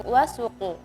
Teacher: Juga tadi ada ketika membaca wasuqu harfus sin harusnya ditipiskan sekali. Tadi terkesan atau terdengar agak tebal.